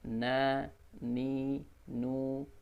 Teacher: Ujung lidah, ya, bertemu dengan langit-langit, di atas sedikit dari lam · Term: huruf nun